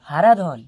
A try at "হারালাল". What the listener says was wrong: হারাধন নয় স্যার, হারালাল, হারালাল। আবার ধন ধরছেন, ধন ছাড়ুন, ধনটা কেটে লাল করুন।